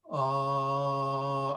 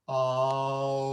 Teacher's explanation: all i did was i made my lips round and it just changed